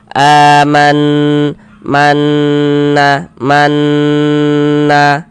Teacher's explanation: Karena dia ghunah, maka cara membacanya kita ghunahkan. Jadi kita ghunahkan tuh kita dengungkan. Jadi bagian man itu suara itu kita tahan kita panjangkan sejenak. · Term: gunah musyaddadah, gunnah musyaddadah